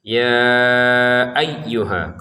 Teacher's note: Di sini kita memiliki kata "ya ayyuha". Ini memiliki tanda bergelombang (simbol madd). Kita membacanya dengan lima ketukan